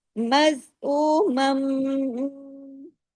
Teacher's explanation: جب بھی میم شد کے ساتھ ہوتا ہے، غنہ ہوتا ہے بڑا، کون سا؟ اکمل غنہ، بڑا غنہ، دیر تک آواز ناک میں چھپی رہتی ہے، اسی کا نام غنہ ہے۔